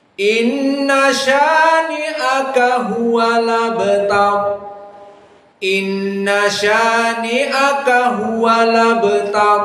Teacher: maka Hamzah di dalam abtar dihapuskan maka yang tersisa tinggal harakatnya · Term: naql